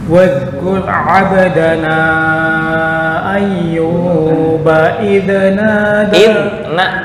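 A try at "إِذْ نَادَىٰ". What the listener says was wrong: Bukan id tapi idnada, nggak boleh kol-kolan.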